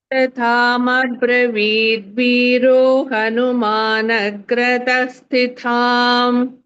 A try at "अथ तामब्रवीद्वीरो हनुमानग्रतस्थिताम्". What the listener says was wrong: स्थि is Mahaprana, ta is Alpaprana.